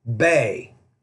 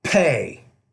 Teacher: with the P in the beginning of the word, you want to pronounce that with more aspiration